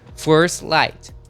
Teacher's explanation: eu não pronuncio first light, eu pronuncio force, terminar com som do s e pulo pro light